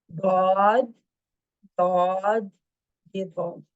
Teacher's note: जुबान की जड़ ऊपर उठी हुई है, ये सबसे बड़ी वजह है इनको मोटा करने की, इसको याद रखें, जुबान की जड़ का ऊपर उठ जाना तालू की तरफ।